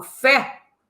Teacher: Fé, o timbre está aberto, acento agudo. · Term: timbre aberto